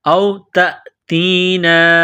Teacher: نون الف مد زبر نا، یہ مد ہے اس کو تھوڑا سا کھینچنا ہے